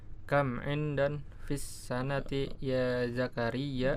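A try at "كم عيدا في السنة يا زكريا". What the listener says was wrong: Aidan, ya. Ini huruf ya, bukan huruf nun, ya.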